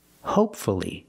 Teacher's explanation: The first word, hopefully, the stress is on the first syllable, and there's only one syllable before F-U-L-L-Y.